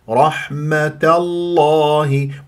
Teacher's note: تفخم من اسم الجلال الله لكن ما افخم التاء